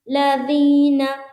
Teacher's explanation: ذال ادا ہوتا ہے، زبان کی جو نوک ہے نا اس کو اوپر اور نیچے کے دانتوں میں لگائیں گے اور ہلکی سی باہر ہونی چاہیے، اور اس کے بعد منہ کو اوپن کریں گے۔